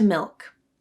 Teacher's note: The thing to focus on when making the dark L is the back of the tongue. It is low and tense and pulls up slightly. The placement of the tongue tip is secondary.